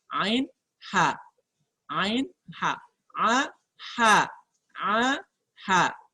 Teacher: Perhatikan ketika dia melafalkan huruf ain, ya, udara di sini tidak bisa masuk ke khayshum, tidak bisa keluar melalui rongga hidung. Jadi keluarnya melalui rongga mulut